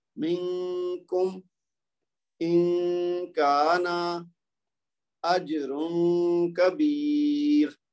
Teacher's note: آپ نے دیکھا اخفا کیسے کرنا ہے کہ ہم نے نون کی آواز کو تھوڑا سا لمبا کرنا ہے اور چھپانا ہے. وہ ناک کے اندر آواز جائے گی، 2 حرکت تک لمبا کریں گے وہ خود بخود چھپ جائے گی، اس کے بعد اگلا حرف ادا کر دینا ہے.